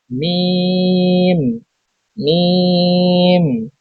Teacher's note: দুই ঠোঁটের শুকনো জায়গা হইতে উচ্চারিত হয় মিম